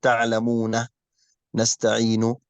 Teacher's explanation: تعلمون النون هنا مفتوحة، لكن عندما أقف عليها يجب أن أقف بالسكون، فهذا سكون عارض ليس أصلي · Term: مد العارض للسكون